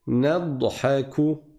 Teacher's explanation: Il n'y a pas de qalqala sur le dad.